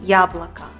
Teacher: А в слове «яблоко» мы отчетливо узнаем звук «я», потому что ударение падает на первый слог.